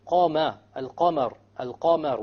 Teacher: Therefore, when we say qama, al-qamar, al-qamar, we notice there's a difference between the fatha of the qaf and the fatha of the mim. The fatha of the qaf is heavier because the qaf is of the letters of tafkhim.